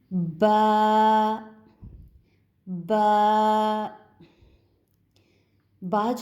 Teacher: یہ دونوں ہونٹوں کی تری والے حصے سے ادا کیا جاتا ہے، یعنی ہونٹوں کے ایک تو باہر والا حصہ ہوتا ہے، ایک اندر والا حصہ، ان دونوں کو ملانے سے، دونوں ہونٹوں کی تری والے حصے کو ملانے سے با کی ادائیگی ہو گئی۔